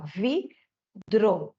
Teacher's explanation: Esse R, ele é o mais difícil, porque se parar para pensar, a gente tem que empurrar a língua no céu da boca, bater lá em cima, vibrar e descer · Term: o R do encontro consonantal